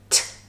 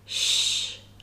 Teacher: the t is the plosive part and the sh is the fricative